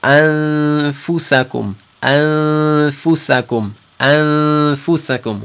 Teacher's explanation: So we might just think, well, we're going to nasalate for 2 haraka and hold it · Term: ikhfa